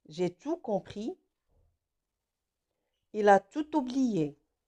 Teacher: Comme tout placé devant un mot qui commence par une voyelle, je dois prononcer le T. Donc T se prononce s'il précède un mot qui commence par une voyelle. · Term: liaison